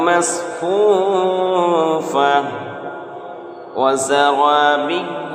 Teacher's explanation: مصفوفۃ یہاں بھی ادغام ناقص دو پیش تنوین کے بعد حروف یؤمن میں سے واو ہے